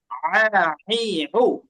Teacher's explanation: আইন উচ্চারণ করার সময় আমরা হামজার মতোই কি করব? শক্ত করব, আর বাতাস অফ রাখবো